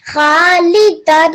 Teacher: So there is two patas, and you made the nasal sound and made it 2 seconds longer